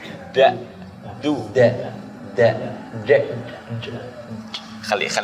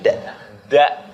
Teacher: Ujung lidah ketemu dengan tempat keluarnya gigi seri atas. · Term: makhraj huruf dal